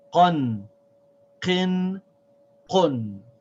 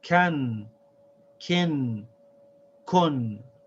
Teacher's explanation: The kaf is pronounced by pressing the tongue against the top of the mouth. And when you pronounce the qaf, it's a little bit further back behind the kaf.